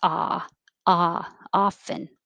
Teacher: looks like an o but sounds like ah